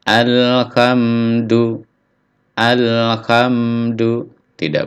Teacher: Tidak ada pantulan di sini ya karena bukan huruf Qalqalah